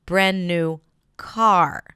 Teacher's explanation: 'brand' gets a secondary stress: brand-new car.